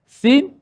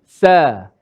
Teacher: Sin tu bila ditebalkan sin, dia secara automatik jadi huruf sa